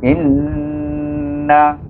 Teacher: Iaitu hamzah ditasdid dengan huruf nun. Nun bertasdid apa baca? Baca dengan gunnah dua harakah.